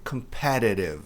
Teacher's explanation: Dois T's ladeados por vogais. A sílaba tônica está no PE. Então, os T's têm som de RE.